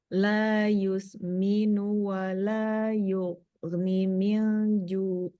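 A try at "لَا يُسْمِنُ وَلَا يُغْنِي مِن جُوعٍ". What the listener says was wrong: lagi-lagi ninya enggak dipanjangin Iya panjang dua harkat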